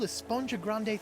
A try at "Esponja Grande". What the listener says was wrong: Actually, it's pronounced Esponja with an H sound at the end.